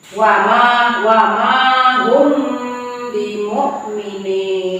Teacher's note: apabila mim sukun bertemu dengan huruf ba, maka cara membacanya samar-samar disertai dengung dengan mulut tertutup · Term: ikhfa syafawi